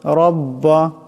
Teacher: এখানে রার উপর জবর আছে, রাকে মোটা করিয়া পড়তে হবে